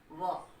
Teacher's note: जिह्वा दांत से भी स्पर्श कर रही है और ओठ की भी सहायता ले रही है